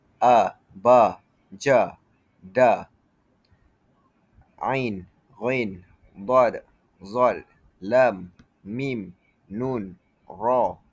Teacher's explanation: Yang pertama, Jahri bertemu dengan hams. Jadi, jahri ini bermaksud suara jelas dan kuat. Tidak ada nafas yang mengalir.